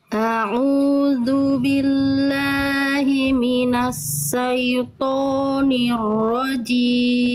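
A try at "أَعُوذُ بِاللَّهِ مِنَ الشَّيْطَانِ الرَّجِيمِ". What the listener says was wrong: Oke, sekali lagi Bunda, bukan minasa, itu sin, harusnya shin. A'udzu billahi minasyaitonir rajim. Minasya. Bunda tadi yang Bunda lafalkan itu SA, minasa, SA, bukan SA. Kalau kita transliterasi ke Latin tuh SYA, sya.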